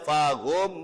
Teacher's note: ada mim sukun bertemu dengan mim tasdid, mim sama mim namanya idgham mimi atau idgham mislen, sama-sama huruf yang sama-sama mim, dibaca hunnah.